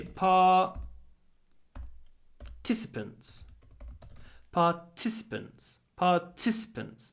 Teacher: The it, because it comes between two unvoiced syllables, I don't give it a lot of voice. It's between these t's.